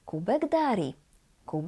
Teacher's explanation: the last C in the word kuc becomes G it's voiced equivalent